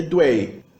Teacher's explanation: O dígrafo UI é lido Wei, um tritongo. Então, H-U-I é Hui, D-U-I é Dui.